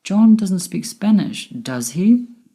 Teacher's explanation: my voice went up at the end with does he because i'm not sure whether he speaks spanish or not